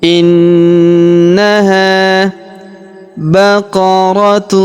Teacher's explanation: huruf ha kita panjangkan dua harakat karena terdapat alif di depannya